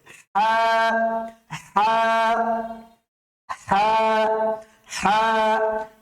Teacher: কণ্ঠনালীর মধ্যভাগ থেকে বেসিক্যালি উচ্চারণটা নিয়ে আসার চেষ্টা করতে হবে কঠিন করে শক্ত করে